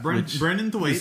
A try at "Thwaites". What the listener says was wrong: Thwaites? sounds like you have a lisp when you say his name. Thwaites. Thwaites. Thwaites.